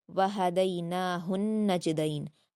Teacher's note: وہدیناہ النجدین، ہا کے بعد نون ساکن، نون مشدد ہے تو ہا کو نون سے ملا کر سختی اور غنہ کے ساتھ پڑھیں گے ، جیم پر قلقلہ کریں گے، دال کو معروف پڑھیں گے، · واو ہا دونوں پر حرکت ہے، وہا ایسے پڑھا جائے گا، دئی میں دال پر یائلین ہے، معروف پڑھیں گے ، وہدیناہ النجدین، ہا کے بعد نون ساکن، نون مشدد ہے